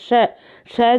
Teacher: तो ये वैसे तो स्पर्श ध्वनियां नहीं है, लेकिन थोड़ा सा हल्का सा टच करती है। श श जब आप लेते हो आपकी जीभ उल्टी होकर थोड़ी सी हल्की सी तालू को टच करती है, इसलिए श ध्वनि जो है वो तालव्य में आ जाएगी, बी आएगा यहाँ पे।